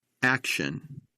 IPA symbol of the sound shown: ʃ